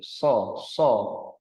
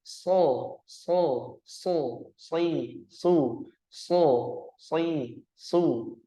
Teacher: Huruf shad itu makhrajnya terletak pada ujung lidah sejajar dengan ujung gigi seri bawah bagian dalam. Nah, posisinya ujung lidah sejajar dengan ujung gigi seri bawah bagian dalam.